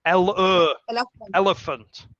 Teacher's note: schwas so the first e is making an e sound but the second e is making a schwa sound and the a in the third syllable is also making a schwa sound